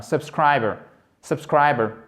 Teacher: Vous voyez, on n'entend même pas le R à la fin.